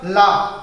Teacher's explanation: जीभ ऊपर गई, ठीक है, दांतों के जड़ को टच की, फिर दोनों साइड से हवा निकली, फिर जो है आपका जो है लाव साउंड जो है हमें आप क्रिएट करते हो। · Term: पार्श्व